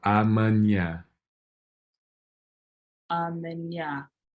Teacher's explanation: the stress is going to be on this last syllable